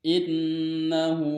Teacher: dibacanya gunnah sebab nun bertasdid dan cara membacanya dengan didengung atau ditahan 3 harokat